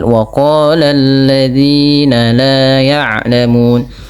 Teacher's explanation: Pada lafal waqala di sini lafal huruf qof dipanjangkan sepanjang dua harakat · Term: mad thbi'i